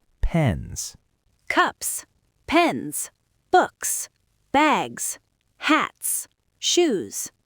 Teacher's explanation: You can hear the rhythm bouncing back and forth between short and long, unvoiced and voiced. · a Z sound and the vowel stretches.